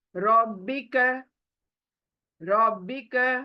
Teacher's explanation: बिहस हम रब्बिका र को कभी भी रब्बिका नहीं बोलते र मोटा रहना चाहिए र जो रे जो है वो उर्दू में रे है अरबिक में र है र यानी मोटा एकदम मुंह गोल होना है